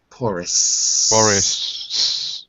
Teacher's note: the last s is a s not a sh